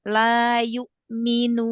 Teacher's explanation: jadi hamzah sukun itu jangan terlalu lama menahannya ya karena nanti seperti ada sakbah jadi lebih cepat